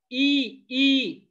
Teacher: तुमची जीभ पहा, बरोबर कठोर तालू जॉईन झाली.